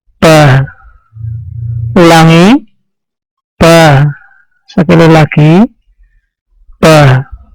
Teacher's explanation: Perhatikan, pada saat kita membacanya, kita merasakan bibir bagian dalam bertemu dan tidak keluar angin serta dibaca tipis. Bibir atas dan bibir bawah tertutup rapat dan posisi lidah di bawah. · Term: huruf ba